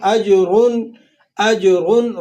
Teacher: را پر تنوین ہے اور پیش اوپر حرکت ہے، تو آپ نے را کو موٹا کر کے ادا کرنا ہے